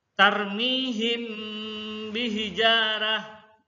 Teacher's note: cara membacanya adalah dengan menyamarkan bacaan mim sukun mati di bibir sambil didengungkan · Adapun menurut secara istilah, ikhfa safawi berarti menyuarakan lafal dengan samar-samar di antara dua bibir, dua bibir dengan mendengung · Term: Ikhfa Syafawi